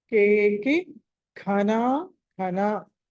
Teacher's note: కేకి ఘన ఘన. ఘ మహాప్రాణము మళ్ళీ ఘ మహాప్రాణం.